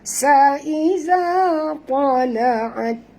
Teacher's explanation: Za di sini asli dan lembut sebutan za, sentil lidah ya.